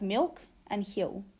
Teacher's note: We pronounce it with the tongue further back in the mouth than many other varieties of English, such as British and American, and there's a tendency for it to be vocalized. That is, for it to be pronounced kind of like a vowel. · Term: vocalized L